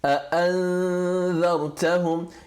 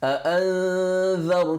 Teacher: You've got a bit of the noon, but your tongue is already at the place of the dhal. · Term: half merger